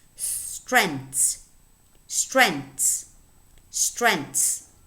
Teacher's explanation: just one in other words this is a one syllable word it's a mono syllabic word which has a very complex onset constituted by three consonant sounds in a very complex coda with one two three four consonants · when we have th and s, we normally delete the th and we only pronounce the s. So this word would be pronounced strengths, strengths, strengths.